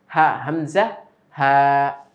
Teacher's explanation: হলকের শুরু হতে উচ্চারিত হয় 2টি হরফ, হামজা, হা